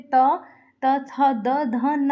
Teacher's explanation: त वर्ग दंत होते हैं, तो त वर्ग में त, त थ द ध न आते हैं